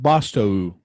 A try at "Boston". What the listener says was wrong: No, it says Boston. That's an N. Boston right